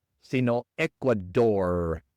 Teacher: la r al final es una r inglesa y no española